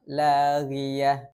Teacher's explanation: Ghain dalam keadaan kasrah, bunyi tebalnya agak sedikit berkurang dibandingkan berharokat fathah dan dhammah.